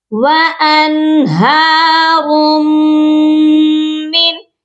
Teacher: صرف اظہار ہلکی کیا جاتا ہے، یعنی کہ ظاہر کیا جائے گا نون کی آواز کو۔